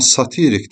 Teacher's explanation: Satirik, belə yazı, satirik deyəndə, satirik əsər, vurğu düşəcək sonuncu hecaya, amma satirik desəm, vurğu i-nin üzərində olacaq. Yəni, ikinci hecada.